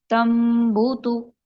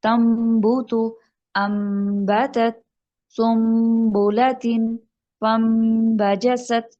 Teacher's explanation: نون کی ساؤنڈ نہیں آ رہی، غنہ کی وجہ سے نون ناک میں جا رہا ہے، اور میم کی ساؤنڈ ہم نے پڑھنی ہے